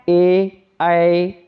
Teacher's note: जब ए ऐ बोलोगे तो ये जो है कंठ और तालु ये दोनों का स्पर्श होता है, एक कंठ का भी और दूसरा तालु का भी, इसीलिए इसको कंठय ताल्य भी तलव्य भी कहते हैं।